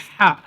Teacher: কণ্ঠনালীর মধ্যভাগ হতে নির্গত হয় হচ্ছে হা। হা একটুখানি হাওয়া বেরিয়ে আসবে